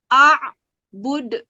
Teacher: Itu adalah bacaan qalqalah kubra, di mana pantulannya lebih keras. · Huruf yang berwarna kuning mengandung hukum bacaan tajwid qalqalah kubra. Ya, bacanya cara memantul dengan keras